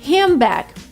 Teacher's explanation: It's handbag, but N and D are replaced by an M. So D disappears right because of collision and then N is replaced by M because of sound change assimilation. · And then N is replaced by M because of sound change, assimilation. So handbag, D disappears, N is changed into M. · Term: elision